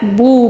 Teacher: یکذبون، بو یہاں پر بو، با واو پیش بو، واو مدہ ہے، اس کو بھی ایک الف کے برابر کھینچ کر پڑھیں گے